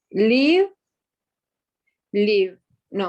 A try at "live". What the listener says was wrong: Live. Live. No, you're still saying leave. This is leave. This is live. Live. Live. Again, leave, live.